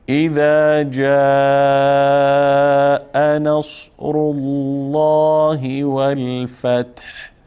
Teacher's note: لام لفظ جلاله یا کلمه الله هم پر خوانده میشه